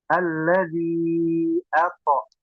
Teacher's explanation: Hamzahnya jelas ato. To-nya dipantulkan.